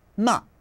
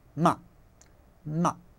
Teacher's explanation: It's just a short, sharp, it's called a falling tone